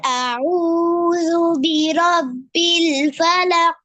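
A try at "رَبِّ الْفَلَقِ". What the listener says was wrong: লাস্টে কলকলা করতে হবে ফালাক ফালাক কলকলা কলকলা আরেকবার আরেকবার বলেন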